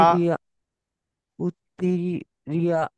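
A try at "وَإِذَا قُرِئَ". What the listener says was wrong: এটা রজের রি, কুরিয়া। এটা ইয়াটা পড়া হবে না, এটা হামজাটা পড়া হবে, হ্যাঁ। শুধুমাত্র লেখা যায় না, এটা হয় আলিফের উপর লেখা হয়, নয় ইয়ার উপর লেখা হয়, নয় এর উপরে লেখা হয়। ওই আলিফ ইয়া ওয়াওটা বাদ চলে যায়, ওই হামজাটাই ধরা হয়।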